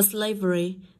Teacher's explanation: dịch ba âm nên nó rơi vào âm Tiết đầu